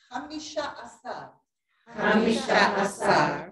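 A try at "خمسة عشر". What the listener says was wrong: Be careful on that first ha, because you're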